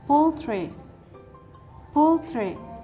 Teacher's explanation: the stress is located on the first syllable